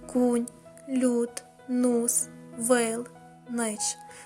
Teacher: Звуки у и на місці літературного і